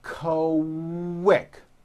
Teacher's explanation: the word quick is pronounced with a k and a strong w sound · q sounds are made with the k sound and the w sound put together